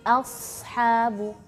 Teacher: tetap hamzah tipis terus masuk ke huruf shad yang tebal